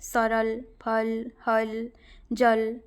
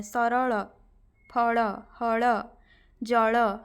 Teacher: ल का उच्चारण हिंदी में ल ही होता है, जबकि ओडिया में ल और ड़